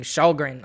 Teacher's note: a k in swedish is apparently an sh sound